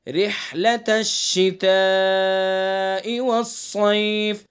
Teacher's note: ہاں کو حلق سے پڑھیں گے، ہاں کا مخرج ہے وسط حلق